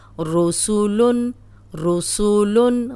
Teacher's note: را موٹی سین سیٹی والا